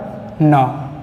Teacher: आपकी जो जीभ है वो मसूड़े के ऊपरी भाग को टच करेगी